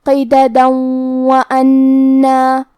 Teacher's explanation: ہم یہ آیت کو اگلی آیت کے ساتھ ملا کے پڑھے تو حرف الواو کلمت وَأَنَّا حروف الادغام بغنہ میں سے ہے اور ادغام کا معنی ہے حرف کو حرف میں داخل کرنا، تو ہم یہ تنوین کو واو میں ملا کے غنہ اور تشدید کے ساتھ یہ حکم کو ادا کریں گے